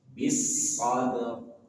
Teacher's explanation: ba punya sifat asli qalqalah. Jangan tinggalkan sifat qalqalahnya. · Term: qalqalah sugro